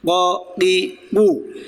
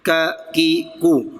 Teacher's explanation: دو نقطوں والا قاف موٹا پڑھنا ہے اور جو دوسرا کاف ہے کتاب والا اسے باریک پڑھنے کی کوشش کرنی